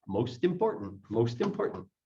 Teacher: It sounds like the T moves over to the word important.